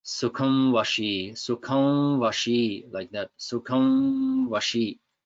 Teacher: This is like you have another wa here, and it becomes a nasal sound. So as the teeth touch the lip for wa, then it causes the sound to come through the nose because there's a closing, partial closing there. When the teeth come to the lip, it's not firm contact, it's soft contact, but you feel the sound come out the nose at the beginning.